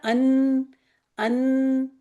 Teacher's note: अन आप देखिए आपकी जुबान थोड़ी गोलाई से हो के जा रही है। नोक बना के नहीं जा रही है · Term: नून